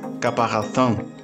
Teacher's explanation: la etnia bubi pronuncia la r como el sonido de la r inicial del francés por lo que la palabra caparazón puede sonar como caparazón se